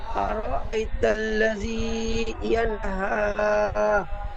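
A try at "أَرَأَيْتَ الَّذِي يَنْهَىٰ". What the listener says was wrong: বানান করবার সময় যতবার শুরু থেকে পড়েছেন আর আই, ঠিক এমন ভাবে হামজাটি একটু টান হয়ে গিয়েছে, হামজা টান হবে না, হামজা জলদি পড়তে হবে। আর আই তাল্লাজি, হামজার উপর যাবার হারাকাত। আর আই তাল্লাজি ইয়ানহা।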